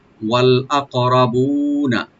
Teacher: ওয়া ওপেন রেখে লামের সাথে মিলাবো আকরাবুন, হামজাকে রাইট দিয়ে কফে একটু কলকলা করবো, মানে ইকু করবো। আক, র এখানে ডিপ করে পড়বো আমরা একটু, বু একালিফ টানবো, নুনে কোনো টান নাই, ওপেন করে পড়বো, ওয়াল আকরাবুনা।